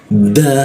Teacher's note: da menggunakan ujung lidah dia ditempelkan ke gigi